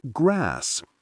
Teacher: Many Americans today still say the short a sound in words like grass, similar to how it was said in England before the 1800s.